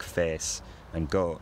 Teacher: monophthongal pronunciations of the face and goat vowels